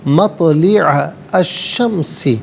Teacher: مطلع میں تو ساکن ہے لیکن حرف قلقلہ ہے تو آواز لوٹتی بھی محسوس ہونی چاہیے. عین پر زبر ہے, اسے الشمسی کے شین کے ساتھ ملائیں گے.